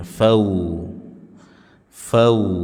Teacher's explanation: wau sukun sebelumnya fathah disebut dengan lin dibaca dengan memonyongkan bibir